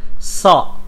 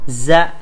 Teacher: dibaca menebal karena suara dan pangkal lidahnya naik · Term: sifat tebal